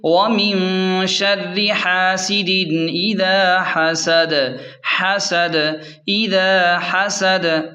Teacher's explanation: وقف کا طریقہ کار یہ ہے، سورت کے اختتام پر دال ساکن ہوگی، دال ساکن ہوگی اور قلقلہ کے ساتھ پڑھا جائے گا